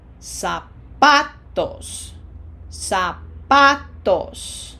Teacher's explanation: Remember, no Z sound in Spanish, just like an S.